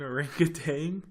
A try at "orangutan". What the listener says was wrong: I think it's tan. I don't think there's a G on the end.